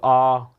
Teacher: अब बड़ा आ से बोले तो आ यहां पर नीचे की ओर जोर आ रहा है पीछे की ओर जोर आ रहा है